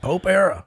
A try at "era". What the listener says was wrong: You said error.